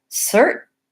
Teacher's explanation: So instead of cert with a puff of air, we're saying cert. We're moving up our tongue into that T position, but we're not releasing the air. So you have to make the T, but not release the T. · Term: stopping the T